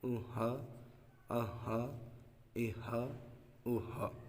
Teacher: اس ہا کا مخارج ہے کہ یہ حلق کے نیچے والے حصے سے ادا ہوتا ہے